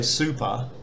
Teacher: the second syllable of super uses an unaspirated p so you don't feel that puff of air